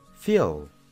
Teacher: termina con una vibración en nuestra garganta y termina con un sonido L